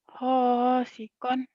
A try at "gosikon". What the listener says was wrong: Go, bukan ho. Go, go, go, go, go.